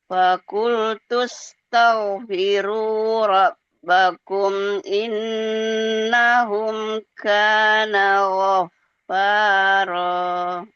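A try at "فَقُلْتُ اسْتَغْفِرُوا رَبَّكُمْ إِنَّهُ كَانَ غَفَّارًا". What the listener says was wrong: Robbakum bukan bakum. Bakum apa itu? Ulang.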